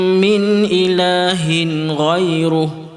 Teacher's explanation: Jangan baca min ilahin. Tak boleh dengung situ sebab tanwin bertemu dengan huruf ghin.